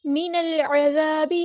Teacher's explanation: عین کو وسطی حلق کے تھروٹ سے ادا کریں گے. ذال کو باریک نرمی سے ادا کریں گے. الف مد آ گیا تو مد اصلی کریں گے اور باقی زیر کو ہم لمبا نہیں کریں گے. · من العذاب ان یعمر، نون کو ہم نے لام کے ساتھ ملا دینا ہے، حمزۃ الوصل ہمارا ڈراپ ہو جائے گا. لام یہاں پر لام کمریہ ہے، اس کو ظاہر کریں گے. عین کو وسطی حلق کے تھروٹ سے ادا کریں گے. · لام یہاں پر لام کمریہ ہے، اس کو ظاہر کریں گے. عین کو وسطی حلق کے تھروٹ سے ادا کریں گے. ذال کو باریک نرمی سے ادا کریں گے.